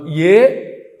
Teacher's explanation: ఏ అన్నప్పుడు కంఠము తాలువు రెండూ కలిపి పనిచేస్తాయి.